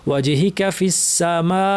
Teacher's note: কাফের পরে কোনো টান নাই, কোনো মাদের হরফ নাই, কিন্তু আমরা টেনে ওয়াজহি কাফি বলে ফেলি।